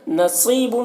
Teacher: صاد کو پر پڑھنا ہے اور یہاں پر یا مدہ ہے، اسے 1 الف کے برابر کھینچ کر پڑھیں گے۔